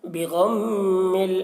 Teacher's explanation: میم مشدد ہے تو یہاں پر میم غنہ کریں گے